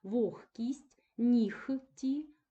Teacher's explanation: звук г вимовляється як х Тобто повністю оглушується